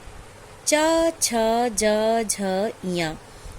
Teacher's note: इसका उच्चारण स्थान है तालु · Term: चा वर्ग